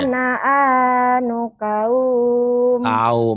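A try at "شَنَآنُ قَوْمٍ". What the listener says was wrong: Jangan kaum, ini bunyi o. Kaum. dan aku suka engkau. Kau. Jangan kaum.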